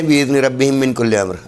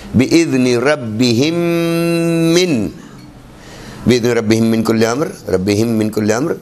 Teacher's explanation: اس کے بعد جو من کا میم ہے اس کے اوپر تشدید ہے. 3 میم ہمیں پڑھنا ہے یہاں پر